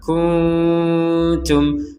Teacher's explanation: di sini ada nun sukun bertemu ta, kita bacanya dengan samar kuntum. Jadi dibaca dengan samar.